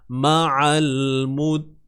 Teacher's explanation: Qin mad arid lis-sukun. Nak baca 2 boleh, 4 boleh, 6 pun boleh.